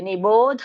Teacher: ಕೌಂತೆಯ ನಿಷ್ಟ ಜ್ಞಾನಸ್ಯ ಯಾಪರ ಹರೇ >> ಚನ್ನಾಗಿ ಬಂತು ಮಾತಾಜಿ ಇಲ್ಲಿ ನಿಭೋ ಭಕ್ಕೆ ಮಹಾಪ್ರಾಣ ಇಲ್ಲ ಧಕ್ಕೆ ಮಹಾಪ್ರಾಣ ಇದೆ